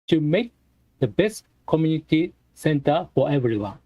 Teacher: so when there's k between the words and t between the words you don't make that sound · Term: no k sound no t sound